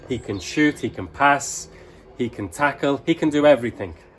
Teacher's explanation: in English 'can' in a positive sentence when a native speaker is talking we use the schwa we use the weak form of 'can' · we use the schwa, we use the weak form of can. So this becomes kun.